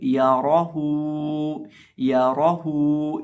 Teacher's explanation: देखिए रौ के मुतल्लिक ये कायदा है कि जब रौ के ऊपर ज़बर हो या रौ के ऊपर पेश हो तो उसको पुर किया जाता है, और जब रौ के नीचे ज़ेर हो तो फिर उसको बरीक किया जाता है। अब यहाँ रौ के ऊपर ज़बर है तो इसलिए यहाँ हम इसको पुर करेंगे और पढ़ेंगे या रौहू, या रौहू, इसको पुर करके पढ़ेंगे।